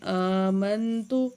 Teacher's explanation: حمزہ کے اوپر کھڑی زبر ہے، تھوڑا سا کھینچ کے پڑھیں گے۔